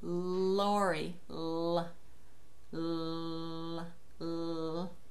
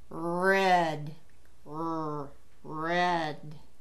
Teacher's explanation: Your tongue doesn't go up with that R, not at all. That's where you make the difference in the sounds.